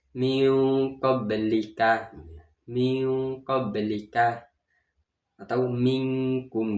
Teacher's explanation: cara membacanya harus disamarkan, samar antara idhar dan idgham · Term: ikhfa